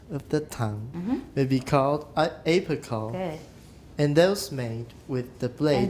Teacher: we want to stress blade that means we're going to suppress the stresses before it